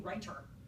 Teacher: We would never use that strong aspirated form of t.